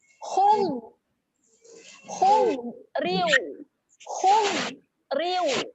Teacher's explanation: Okey, saya nak bacakan pada bulat kotak berwarna oren. Okey, kita bacakan jangan melantun, tahankan saja, naikkan tepi lidah ke geraham atas, menghasilkan bunyi hum.